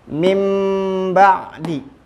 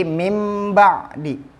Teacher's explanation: menurut bahasa adalah memindahkan sesuatu dari keadaannya sedangkan menurut istilah adalah mengganti suara nun mati atau tanwin dengan suara mim yang disamarkan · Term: iqlab